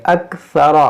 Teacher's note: यहाँ सा है, सा को नरमी से पढ़ेंगे, रा को मोटा करेंगे, अक्सरा। व कानल इंसानु अक्सर शैइन जदला, वमा मनअन नास अन युमिनू इज़ जाअहुम।